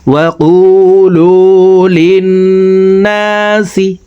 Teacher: তো এই জের ওয়ালা লামটি তাসদিদ ওয়ালা নুনের সাথে 3 সেকেন্ড পরিমাণ গুন্না করে পড়ব, কারণ হরকতের বামে নুনের উপরে তাসদিদ আছে। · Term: ওয়াজিব গুন্না